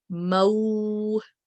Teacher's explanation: Similarly, letter meme is bearing the short stroke of fatha over it, which makes it maftu, and we're going to read it as ma for 1 count only. But when ma is followed by waw sakin, we're going to read it as mau for 2 seconds. We're going to soften it.